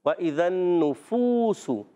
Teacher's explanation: واو مدہ کو ایک الف کھینچ کر ادا کرتے ہیں